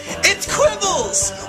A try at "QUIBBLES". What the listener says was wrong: I hate to interrupt, but the name of the game is QUIBBLES. I hate to quibble, but you said kibbles.